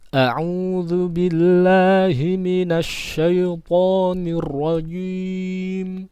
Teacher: hamzah itu makhrajnya ada di bawah tenggorokan bagian bawah ya